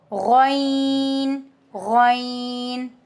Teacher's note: हल के ऊपर वाले हिस्से से गन अदा होता है अपर थ्रोट लाइक गार्गलिंग साउंड। · غین حلق کے اوپر والے حصے سے غین ادا ہوتا ہے. اپر تھروٹ لائک گارگلنگ ساؤنڈ، ٹھیک ہے، یہ والی گارگلنگ ساؤنڈ ہے.